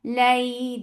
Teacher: So when you are pronouncing these letters, you are making them soft. Lay, by giving a nice time on fatha and giving a very soft touch to ya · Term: lean letters